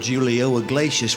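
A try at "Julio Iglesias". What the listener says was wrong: it's not pronounced Julio the J is silent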